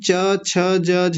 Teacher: जहां से हम च छ ज झ बोलते हैं और हमारी जीभ जहां जाके लगती है वो है तालु